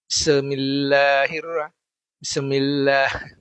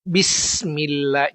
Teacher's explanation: Nyambung sin masuk ke huruf mim ya.